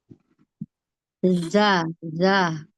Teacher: ujung lidah bertemu dengan ujung gigi seri atas